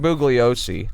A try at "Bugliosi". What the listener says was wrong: I don't think he pronounced the G. I think it was Bugliosi.